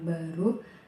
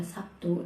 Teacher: fonem B pada kata baru diucapkan sebagai B, tapi dalam kata Sabtu diucapkan sebagai P